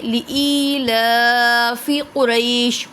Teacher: ٹھیک ہے، لی پہ یا مدہ ہو رہا ہے، یا سکن سے پہلے زیر ہے تو ای کو بھی کھینچیں گے، لا پہ کھڑی حرکات ہے تو کھڑی حرکات کو بھی کھینچیں گے، اسی لیے لإیلاف قریش۔ قوف کو پر پڑھیں گے کیونکہ حرف مستعلیہ میں سے ہے۔ قری پہ یا سکن سے پہلے زبر ہے تو یا لین بھی ہو رہا ہے۔